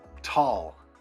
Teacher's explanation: Now guys, there are 3 different types of T's, okay? You've got the T that starts a word, and that's definitely an aspirated sound